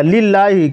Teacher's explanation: یہ لام کو باریک پڑھا جائے گا